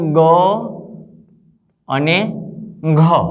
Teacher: ગ અને ઘ વ્યંજનનું ઉચ્ચારણ કરીએ ત્યારે આપણી નાદતંત્રીમાં એટલે કે સ્વરપેટીમાં કંપનનું પ્રમાણ વધે છે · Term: ઘોષ વ્યંજન